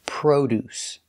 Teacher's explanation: we use the long o like No And Go Pro produce the first syllable is stressed so produce produce produce